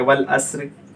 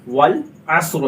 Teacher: रा को पुर पढ़ते हैं, चाहे वो रा जज़म हो या वफ़ करते वक्त हम इसको जज़म करेंगे तो भी पुर पढ़ेंगे